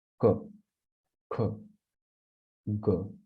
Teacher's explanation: such letters, when they are pronounced from this place which is known as the throat, so such letters are known as either kanthya varnas or gutturals